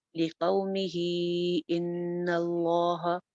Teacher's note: کیونکہ آگے ان اللہ، آگے حمزہ سے، ان کا حمزے کی وجہ سے، تو لِقَوْمِهِ کو دو الف لمبا کریں گے، لِقَوْمِهِ ان اللہ، ان نون چھت پہ پہلے غنہ ہو جائے گا، اس کے بعد لفظ جلالہ کو موٹا کریں گے